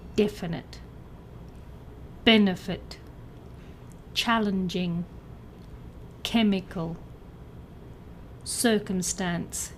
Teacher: words that sound like cucumber with the stress on the first syllable